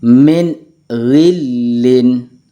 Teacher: Nun sukun bertemu dengan ghin. Min ghillin, harus dibaca jelas.